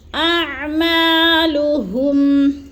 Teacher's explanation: حمزہ حلق کے آخری حصے سے حمزہ، اور عین حلق کے درمیانی حصے سے